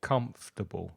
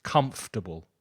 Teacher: three syllables the first one is stressed